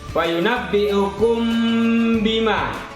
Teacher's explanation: Ada mim mati bertemu dengan ba. Ini disebut ikhfa syafawi. Berdengung membacanya.